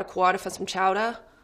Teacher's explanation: any ER would have an ah at the end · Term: standard Boston accent